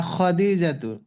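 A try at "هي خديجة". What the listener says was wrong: খ টান হবে না, হিয়া খদিজাতু।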